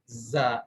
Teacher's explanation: زا کی ادائیگی کے اندر زبان لگ نہیں رہی، قریب جا رہی ہے مگر کہیں لگ نہیں رہی ، زبان کا عمل دخل اس کے اندر بھی ہے زا